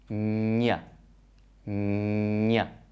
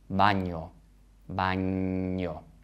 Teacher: this sound in Spanish is made with the middle of the tongue moving up and touching that hard palate. Ñ, ñ. And you'll notice that the air is going through the nose. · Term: nasal consonant